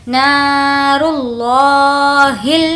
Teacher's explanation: نار اللہ، نا کو کھینچ کر پڑھیں گے، الف مدہ ہے، را لام پیش رل، اللہ کے لام کو موٹا پڑھیں گے کیونکہ اس سے پہلے پیش ہے